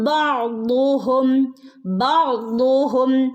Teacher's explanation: ഐൻ്റെ മുകളിൽ സുക്കൂനുണ്ട്, പക്ഷെ അതിന് നമ്മൾ ബഅ്ദുഹും ഫുൾ സുക്കൂന് കൊടുക്കരുത്, ഹാഫ് സുക്കൂൻ.